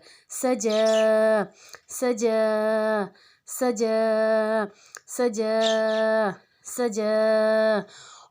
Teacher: सीन सीटी वाला और जीम के ऊपर खड़ी ज़बर।